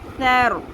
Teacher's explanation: سا زبر، رو، سیر، سا کو نرمی سے پڑھنا ہے، سیٹی کی آواز نہیں آنی چاہیے